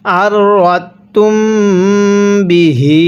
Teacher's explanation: এই মিম সাকিনের মধ্যে আমরা গুন্নাহ করব, কারণ মিম সাকিনের পরে বা থাকলে সেই মিমটিকে গুন্নাহ করে পড়তে হয়।